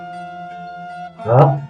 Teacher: berat ya, ha ini keluar dari dada ya, ha ini ha ringan, ini berat, ha, lam alif, hamzah, ya.